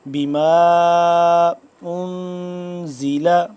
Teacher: یہاں پہ مد آ گئی تو یہاں پہ ہم اس کو لمبا کریں گے 3 الف کے برابر تقریباً